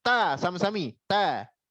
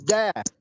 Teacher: ujung lidah bertemu dengan gigi seri atas perbatasan gusi.